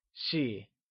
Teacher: Xi is pronounced in the neutral tone